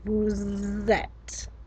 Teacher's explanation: I was making a liaison in between vous and et, because vous ends in a normally silent consonant and et begins with a vowel, so we liaise them together